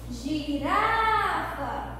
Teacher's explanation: eu pronunciei o Rá com mais intensidade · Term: sílaba tônica